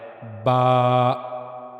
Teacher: दोनों होठों का अंदरूनी हिस्सा जो मुंह की तरफ वाला है, वह जब आपस में मिलता है, तो तब बा अदा होता है। · جاتا ہے۔ پھر با کے بارے میں ہم نے پڑھا کہ دونوں ہونٹ جب آپس میں ملتے ہیں اور دونوں ہونٹوں کا اندرونی حصہ جو منہ کی طرف والا ہے وہ جب آپس میں ملتا ہے تو تب با ادا ہوتا ہے